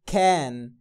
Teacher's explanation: ده short A بيتنطق مد ألف حنين. مش short O. short O لما كان A وعليها نقطتين كنت بتقول مد ألف مفخم.